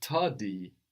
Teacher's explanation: this tardy, we hear the D there that we don't pronounce in French